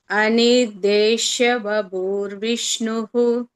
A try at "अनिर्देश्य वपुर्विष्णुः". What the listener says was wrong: Pu is rasva bhagini. Anirdeshya vapurvishnuhu. You are just elongated pu. So not necessary. It is a rasva only.